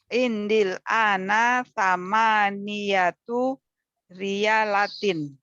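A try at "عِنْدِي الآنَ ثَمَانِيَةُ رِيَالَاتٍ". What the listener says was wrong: Aywa samaniyatu riyalatin. Ahsanti, sahih.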